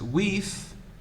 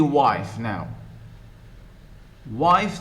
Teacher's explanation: uh by today beat so the e has become i moving changing from a single sound e to two sounds diphthongized i how two sounds we have the air and the e